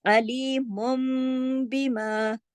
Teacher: इसके अंदर शर्त ये है कि नून साकिन या तनवीन के बाद अगर बा आ जाए, देखिए सिर्फ इसमें एक ही लफ्ज याद रखना है कि नून साकिन या तनवीन के बाद अगर बा आ जाए, तो नून साकिन या तनवीन की आवाज को मीम में तब्दील करके गुन्ने के साथ पढ़ेंगे। नून साकिन के बाद अगर बा आ जाए, सिर्फ एक लफ्ज है बा आ जाए, तो फिर नून की आवाज मीम की आवाज में बदल जाएगी और साथ गुन्ना भी होगा। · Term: इक़लाब